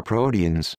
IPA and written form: ˈproʊti.ɨnz (Proteins)